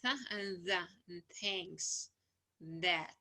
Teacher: the tip of the tongue touches the inner edge of the upper teeth. That's why it like here said, it's like tongue between the teeth. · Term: dental